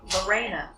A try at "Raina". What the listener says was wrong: No, Raina. Just R. R-A-I-N-A.